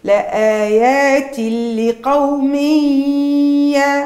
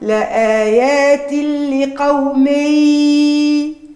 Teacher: تنوين الكسر بعده حرف الياء الادغام مع ابراز الغنه